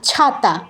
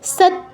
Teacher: এখানে একটা বিষয় প্রসঙ্গক্রমে বলছি, অনেকেই দন্তস্বর উচ্চারণটা ছয়ের মতো করেন, এটা করবেন না। ছয়ের উচ্চারণ স্থান কোথায়? চ, ছ, জ, ঝ, তালুতে। আর দন্তস্বর উচ্চারণ, এটা দন্তবর্ণ, এটার উচ্চারণ হচ্ছে দন্তে, জিহ্বা দন্তে টাচ করবে, তাহলে স আর ছ কখনো এক হতে পারে না।